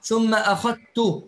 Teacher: بإدغام الذال في التاء